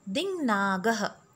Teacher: Ka has got changed into nga. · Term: anunasik sandhi